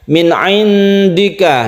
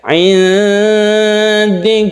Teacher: samar itu bukan nun mati, bukan suara n, tapi suaranya itu melebur ketika kita menyiapkan huruf dal di rongga mulut kita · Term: ikhfa